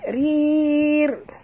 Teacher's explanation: ra tipis, tak boleh tebal ya, kena ra baris bawah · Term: ra tarqiq